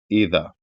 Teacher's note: और इसी तरीके से हमजा से शुरू है तो हमजा का मखरज अदा करना है जो कि हलक से अदा होता है।